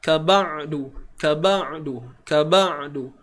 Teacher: Dan kaedahnya ialah kita sempitkan di ruangan kerongkong kita ni. Tengah kerongkong ni kita sempitkan dia. · Huruf ain ni daripada kerongkong, iaitu di bahagian spesifiknya ialah di tengah kerongkong ni.